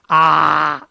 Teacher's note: विवृत स्वर में मुंह पूरा खुल रहा है, जितना मैक्सिमम खुल सकता है